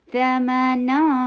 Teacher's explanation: ثمنا، ثا short, ثا جو ہے آگے کے دو دانتوں کے نیچے زبان کی نوک رکھنے سے ادا ہوتا ہے